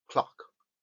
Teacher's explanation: Es una especie de O muy abierta. Casi, casi tenemos que poner la boca para decir una A, pero estamos pronunciando una O.